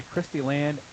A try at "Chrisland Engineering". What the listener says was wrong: Chrisland You're adding syllables here. We don't have Chris Christie showing up, I don't think.